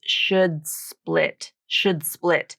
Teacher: It's linking with the unreleased D consonant to another consonant. And it's between the words should split.